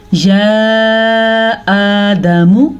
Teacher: میم کو لمبا نہیں کرنا، دال کو لمبا نہیں کرنا کیونکہ دال کے اوپر زبر ہے